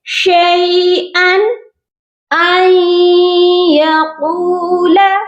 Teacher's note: ان پر غنہ نہیں ہوگا کیونکہ یہاں پر بھی 2 زبر کے بعد حروف حلقی ہے، اسی لیے یہاں پر ہم نے صرف تنوین کی آواز کو ظاہر کرنا ہے